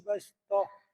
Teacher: Imam Asim riwayah Hafaz, bastohnya dibaca sin ya. Jangan bas, jangan sod.